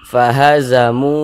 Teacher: Jadi kalau kita membaca Al-Quran, kita perhatikan kalau ada huruf waw, ada tanda sukun, sebelum waw sukun itu ada huruf yang memiliki tanda baca dhammah. Nah, maka huruf yang memiliki tanda baca dhammah ini dibaca panjang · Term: mad tabi'i